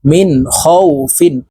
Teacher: নুন সাকিনের পরে ছয় হরফের একটি হরফ খ আসছে এই কারণে এই নুন সাকিনকে গুন্না ছাড়া স্পষ্ট করিয়া পড়বো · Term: ইজহারের হরফ